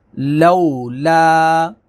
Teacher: لو واولین ہے، لا الف مدہ ہے، واولین کو نرمی کے ساتھ اور الف مدہ کو کھینچیں گے